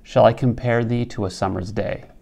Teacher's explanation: The caesura is after thee.